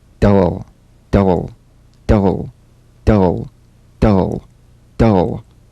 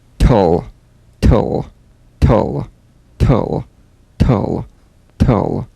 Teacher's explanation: DL and TL, cognates, voiced and unvoiced, tongue tip to gum ridge consonants. Bounce the D or T drum beat off the gum ridge and return there immediately for the L.